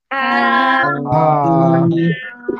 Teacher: এই যে অক্ষরটা, এই অক্ষরটা কিভাবে পড়তে হয়, গলাটা চেপে এক আলিফটা নিয়ে হালকা মুখ দিয়ে বাতাস বের করে উচ্চারণ করতে হয়।